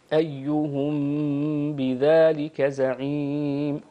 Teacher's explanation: الميم الساكنة تخفى عند حرف الباء. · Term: غنة الإخفاء, الإخفاء